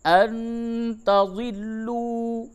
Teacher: نون ساکن کے بعد تا ہے، اخفا کیجئے